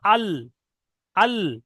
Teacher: যখন দেখবেন যে আমার জীবের আগাটা এখানে যেমন বলা হয়েছে জীবের আগাটা উপরে দাঁতের মাড়ির সঙ্গে লেগে উচ্চারিত হয়, জীবের আগার কিনারা এবং সামনের উপরে দুই পাশের দাঁতের গোড়ার সাথে লাগিয়ে উচ্চারিত হয় লাম।